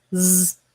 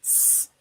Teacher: One is voiced, which means we use our voice to make the sound z. And if we don't use our voice, s.